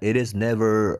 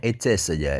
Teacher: Kalau it is kan American ya, pakai dirubah jadi D karena diapit vowel. Jadi D kan, it is.